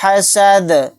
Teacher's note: دال کو یہاں پر ہم ساکن بنا کر پڑھیں گے آیت کرنے کی صورت میں، دال ساکن ہوگا تو دال اگر جزم ہوگا تو دال کے اندر قلقلہ بھی ہوگا